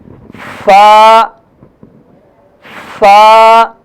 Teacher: دانتوں کی نوک اور نیچے والے ہونٹ کی اندرونی حصہ دانتوں کی نوک نیچے والے ہونٹ کے اندرونی حصے سے ٹکرائے گی اور فا ادا ہوگا